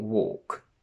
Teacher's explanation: let's start from walk where we notice that the l is completely silent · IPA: /wɔ:k/